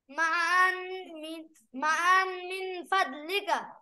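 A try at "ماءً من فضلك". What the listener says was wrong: এখানে মা আন, হামজা স্পষ্ট করো, মা আন মিন ফাদলিকা।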